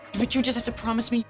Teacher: we don't have that full engagement of the voice we don't have full volume we don't have a lot of up down of Melody